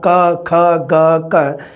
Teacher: ਜੀਭ ਦਾ ਪਿਛਲਾ ਹਿੱਸਾ ਪਿਛਲੇ ਤਾਲੂਆਂ ਨੂੰ ਟੱਚ ਕਰ ਰਿਹਾ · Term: ਕੰਠੀ ਜਾਂ ਕੋਮਲ ਤਾਲਵੀ